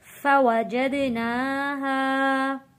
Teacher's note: دال حروف قلقلہ ہے، نون کے اوپر کھڑی زبر ہے، تو قلقلے میں آواز واپس پلٹ کر آئے گی۔ کھڑی زبر کو ایک الف کے برابر کھینچ کر پڑھیں گے۔